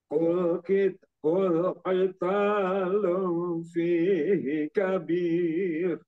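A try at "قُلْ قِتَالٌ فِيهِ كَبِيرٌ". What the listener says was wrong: Cuman tahan di ikhfa-nya itu sedikit terlalu apa? Kurang tambahin lagi sedikit tadi.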